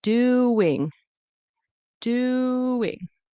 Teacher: Ooh, ing. There's a W in between. Doing. Doing.